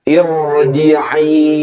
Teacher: Itu hamzah wasal. Nah, huruf ro dibaca tebal ketika ro-nya sukun, sebelumnya ada hamzah wasal. Maka ro ini dibaca tebal.